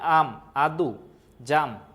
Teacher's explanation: বাংলা উচ্চারণের ধারা অনুযায়ী একাক্ষর শব্দের আ কিছুটা দীর্ঘ উচ্চারিত হয়। তার মানে আম, আদু, জাম।